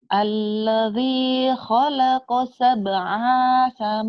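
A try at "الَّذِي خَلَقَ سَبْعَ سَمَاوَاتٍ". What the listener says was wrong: Pendek. Berapa panjang? Pendek. Itu ya penyakit ibu, ingat-ingat ya di situ ya. memanjangkan bacaan yang pendek. Enggak boleh ya.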